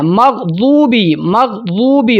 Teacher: اب دیکھیں لفظ ہے مغضوبی، ضاد موٹے حروف میں سے بھی ہے اور اس کی سیٹی نہیں نکلتی، کچھ لوگ پڑھتے ہیں مغضوبی، مغضوبی، زو نہیں ہے، مغضوبی، غین بھی موٹا، ضاد بھی موٹا سیٹی کے بغیر